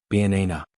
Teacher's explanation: in banana the stress is on the second syllable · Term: word stress